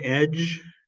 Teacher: it's not a D sound it's a j sound so there's no plosive there